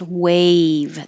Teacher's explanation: the vowel is a so your tongue has to rise